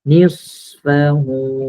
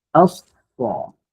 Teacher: Okey, apabila bertanda sukun. As-safir ni adalah bunyi berdesir yang kuat.